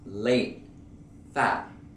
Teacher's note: notice you don't hear the T and you don't hear a D. It's more like a stop almost in the air. Fat, late. You pick up your tongue and you pronounce it like late, fat. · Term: stop T